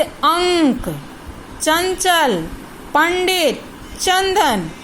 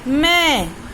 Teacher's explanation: जब हम अनुस्वार का प्रयोग करते हैं तो हवा नाक को अधिक स्पर्श करती है और हवा वहां से निकलती है।